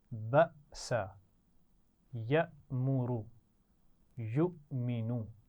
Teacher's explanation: حمزہ پر جھٹکے کے ساتھ پڑھا ہے، کیونکہ اس پر جزم تھی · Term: حمزہ ساکن